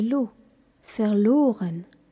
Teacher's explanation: Dans verloren, par exemple, la syllabe accentuée est lo